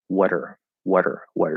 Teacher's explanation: the r disappears the ah part and it just becomes an er vowel but we still flap the t into a d